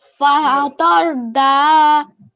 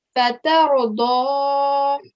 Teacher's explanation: And this letter here is a dod, all right? We cannot give it a normal sound of like fatha, like we can't say da. We have to say do. We have to give a round mouth